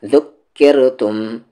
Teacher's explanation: را کو یہاں پر لائٹ کرنا ہے کیونکہ ساؤنڈ نیچے جا رہی ہے را کی